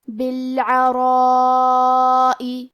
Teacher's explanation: کلمت بالعراء میں را پہ زبر ہے، تو یہاں را کا حکم ہے تفخیم. ہم حرف الرا کو موٹی آواز میں پڑھیں گے، اور کیونکہ اس کے بعد مد الف ہے لہذا ہمیں مد الف کو بھی بھاری آواز میں پڑھنا ہے. یہ مد واجب متصل ہے، اور مد واجب متصل کا معنی ہے کہ حرف المد اور اس کی وجہ جو کہ حمزہ ہے دونوں ایک ہی کلمہ میں ہو. · یہ مد واجب متصل ہے، اور مد واجب متصل کا معنی ہے کہ حرف المد اور اس کی وجہ جو کہ حمزہ ہے دونوں ایک ہی کلمہ میں ہو. اس مد میں ہم اپنی آواز 4 مد کے برابر لمبی کریں گے